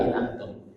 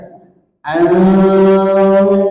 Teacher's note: In angnya panjang. Baru ujungnya di hidung. Jadi angnya itu ketemu nun ketemu taknya, samarnya itu agak panjang. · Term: ikhfa